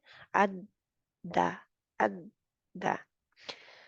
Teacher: दा मोटा भी नहीं है, ये बारीक है, बहुत आसानी के साथ इसको अदा करना है, वरना इसकी भी गड़बड़ हो जाएगी, क्योंकि दाल है ना, तो वो दाद की तरफ भी इसको मोटा नहीं कर देना, ठीक है।